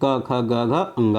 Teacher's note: कंठ से उच्चरित होने वाली ध्वनियाँ होती हैं, का वर्ग की होती हैं